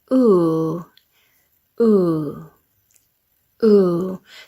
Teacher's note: Now you can see I'm pursing my lips. Ooh, but I'm not dropping my jaw. My jaw stays up. The sides of my tongue are just underneath my teeth. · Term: the long sound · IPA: /u:/